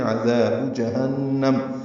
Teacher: عین وسط حلق سے ادا ہوگا